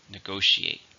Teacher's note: How many syllables are in negotiate? 4. Stress on the second.